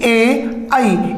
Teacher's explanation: ए, आई, इनका उच्चारण स्थान क्या होता है? कंठ तालु होता है।